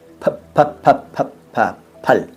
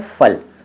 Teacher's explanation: कुछ लोग कहते हैं फल, दंतोष्ठ कर देते हैं। दंतोष्ठ शब्द नहीं है, वो ओष्ठ शब्द है फल